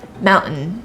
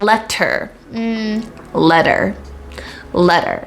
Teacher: it's kind of like a stop it's kind of like this pause in the middle of the sound and that is the glottal stop